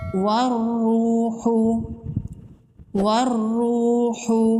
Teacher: یہاں پر حروف شمسی کا قاعدہ ہے، را پر تشدید ہے، را کو سختی سے پڑھیں گے۔ را پر پیش ہے، را کو پر پڑھیں گے۔ والروح، والروح، واو مدہ ہے، 1 الف کے برابر کھینچ کے پڑھیں گے۔